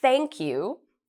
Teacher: you'll notice my tongue touches my teeth thank you so I'm using my teeth to pronounce the sound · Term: th sound